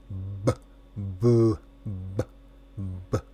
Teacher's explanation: Este sonido es sonoro. Así que tus cuerdas vocales deberían estar zumbando como una abeja.